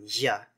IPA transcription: ʝ